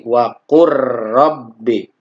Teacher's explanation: cara membacanya adalah dilebur huruf lam sukunnya ke huruf yang kedua yaitu huruf ro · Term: Idgham mutaqaribain